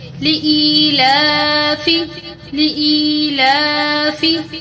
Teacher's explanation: لام کے اوپر کھڑی زبر ہے، اس کو بھی تھوڑا لمبا کر کے پڑھیں گے · یہاں پر الف اور یا ہے، ان کو تھوڑا کھینچ کر پڑھیں گے